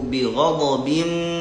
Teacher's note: Awas perhatikan ba mad wajib panjang ya.